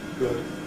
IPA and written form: gɵd (good)